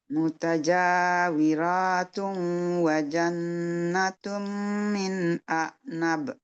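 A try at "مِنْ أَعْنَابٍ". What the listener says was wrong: Nah, nabnya juga panjang. Min a'nab. Panjang.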